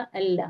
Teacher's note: तो हमजा अलिफ लगा है ना, तो वहां पे जी जबर की हरकत आ जाएगी, तो उसे हम हमजा पढ़ेंगे। हमजा, अब लाम पे तजदीद है तो तजदीद वाले हुर्फ को हम 2 बार पढ़ते हैं, एक बार पहले वाले हुर्फ से मिलाकर पढ़ेंगे और एक बार उसका खुद का वजूद होता है।